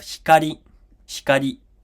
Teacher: so you just hear basically air. Okay, there's no vowel sound there. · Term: unvoiced